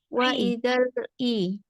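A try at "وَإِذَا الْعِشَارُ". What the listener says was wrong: Ya, ambil ain jangan hamzah.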